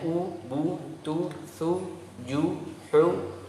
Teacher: Adapun dhammah caranya adalah membentuk bulatan kecil dengan dua bibir, ya, dengan memajukan bibir sedikit, kemudian ada bulatannya. Jadi nggak sekedar maju gitu, tapi dibulatkan.